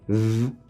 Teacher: Let's put our fingers on our throat once more and say v. We'll find that there is vibration. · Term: voiced sound